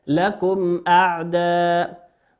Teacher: ميم ساكنة أتى بعدها حرف الهمزة، والهمزة من حروف الإظهار، تظهر كما هي